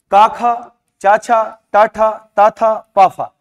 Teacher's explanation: क ख छ ट ठ त थ प फ इनके उच्चारण में कंपन नहीं होता है